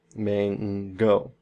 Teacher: we have that ng sound. That's our velar sound.